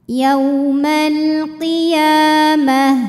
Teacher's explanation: Ya matobi'i muqaddar karena ada baris fathah tegak di atas huruf ya. Cara membacanya dipanjangkan ya-nya 2 harokat.